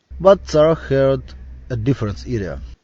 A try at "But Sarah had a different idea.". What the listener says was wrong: Had. He kind of said heard. It was almost like heard. And I heard difference instead of different. And idea. He said idia really fast, so fast that it almost sounded like era.